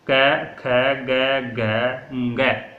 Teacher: सपर्श व्यंजन इसलिए कहते हैं इनको कि क ख ग घ इनका उच्चारण स्थान होता है कंठ